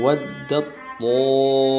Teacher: dileburkan kepada huruf th bertasydid. Jadi ta sukun dileburkan ke th tanpa ditahan atau disertai dengung. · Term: idgam mutajannisain